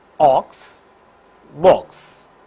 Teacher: the lips are rounded during the articulation of this vowel the lips are in rounded position